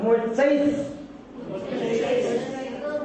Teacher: मुच्चै के बाद आधे हा का उच्चारण करते हैं और हा में आधा सा जोड़ देते हैं, तो मुच्चै।